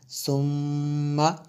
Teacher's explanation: سا میم پیش ثم میم زبر ما ثم، اس سا کو دبا کے نہیں پڑھتے بلکہ اس کو نرم پڑھیں گے، اور میم جو ہے مشدد ہے اس لیے ہم نے یہاں پہ غنہ کیا